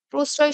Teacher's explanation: প্রশ্রয় শব্দটা দেখো, ১ম এ যে ফলা আছে সেটা কিন্তু ২ বার উচ্চারণ হবে না। মাঝখানে যে ফলা আছে সেইটার প্রভাবে স এর উচ্চারণ ২ বার হয়েছে। আর এখানে স এর উচ্চারণটা স এর মতো হয়েছে।